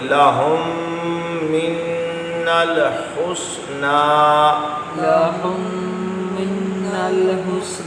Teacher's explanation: پہلے ادغام شفوی ہوا، میم ساکن کے بعد دوسرا میم آیا. آگے آپ نے یہ قاعدہ پچھلے اسباق میں آپ پڑھ چکے ہیں کہ نون پر تشدید ہو تو غنہ ہوتا ہے، من یہاں بھی غنہ ہے۔